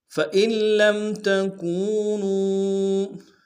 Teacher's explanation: نون کو نہیں پڑھیں گے، لام سے ملائیں گے۔ فَإِن لَّمْ، لام کو میم ساکن کے سامنے آنا، میم ساکن میں غنہ کریں گے۔